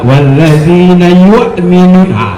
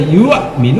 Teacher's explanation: Ditahan aja yuk, karena sifat hurufnya kalau kita kaji sifat huruf, hamzah itu syiddah dia, keras hurufnya, dan apabila diucapkan tahan gitu, jangan dilenturkan. Kalau lenturkan tadi ya yuk minum dilentur jadinya, ya.